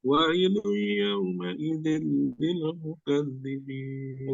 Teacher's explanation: Idgham bi gunnah, tapi dia gunahnya gunah biasa, bukan terlalu lama mim dan nun.